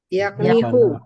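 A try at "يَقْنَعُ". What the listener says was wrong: Yaknahu. 3 bukan 2 ya, 3. Kalau 3 itu A sama A. Ya, AA. Yaknahu. Yaknahu.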